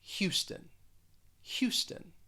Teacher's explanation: two syllables the stress is on that first syllable and it's almost like that first syllable you have like h